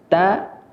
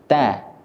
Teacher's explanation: Huruf ta adalah huruf yang keluar dari ujung lisan, nempel dengan pangkal gigi seri bagian atas atau awal tumbuhnya gigi seri bagian atas.